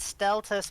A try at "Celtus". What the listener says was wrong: You did. You put an extra T in there. Celtus.